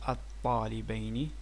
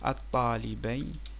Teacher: In reality it's like L, but the L will be assimilated to the T, and it becomes الطالبين.